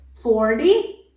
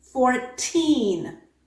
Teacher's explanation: In the word 40, the T changes into the alveolar flap because it is followed by an unstressed vowel.